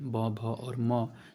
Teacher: दोनों ओठों को जो सटने से उच्चारण होता है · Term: प वर्ग